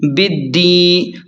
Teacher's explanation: با کو دال کے ساتھ سختی سے ملائیں کیونکہ شد ہے دال پر، اور یا مدہ کو تھوڑا سا کھینچ کر پڑھیں